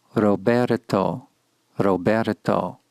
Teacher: wish to simplify and substitute the shorter rolled R of Spanish notice the position of the tongue touching the roof of the mouth when we say the Spanish name Roberto Roberto this sound will resemble to some degree the letter d